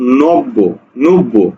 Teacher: এই উচ্চারণ করতে গিয়ে আমি করছি কি এ ব দীপ্ত হবে মানে কি ব এর উচ্চারণ দুইবার হবে